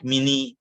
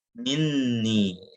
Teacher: jadi seakan-akan ada dua nun. Nun pertama sukun, nun yang kedua itu berharokat kasroh, ni, itu disebut dengan nun wiqayah.